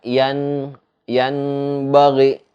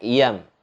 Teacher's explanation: Nah, jadi nggak dibaca yan bagi, nggak dibaca, tapi dibaca iyam, memasukkan huruf nun matinya itu menjadi huruf mim. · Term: iqlab